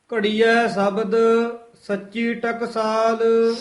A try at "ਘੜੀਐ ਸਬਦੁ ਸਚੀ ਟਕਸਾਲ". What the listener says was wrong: ਸ਼ਬਦ ਬੱਬੇ ਨਾਲ ਬੋਲਣਾ ਹੈ, ਸ਼ਬਦ ਨਹੀਂ ਕਹਿਣਾ ਹੈ, ਬੱਬਾ ਸ਼ੁੱਧ ਬੋਲਣਾ ਹੈ।